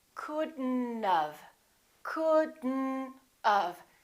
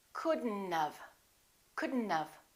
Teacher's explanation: we pronounce the d and then we connect the d next to the n and then the o disappears but the t also disappears